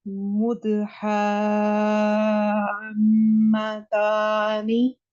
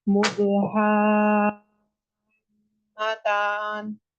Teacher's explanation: نون کو کسرہ نہیں ادا کریں نا، نون کو ساکن کریں